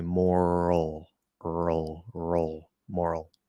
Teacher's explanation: You can just use ul, the dark L, the half L vowel.